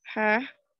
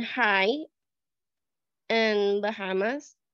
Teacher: this sound is usually described as voiceless glottal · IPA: /h/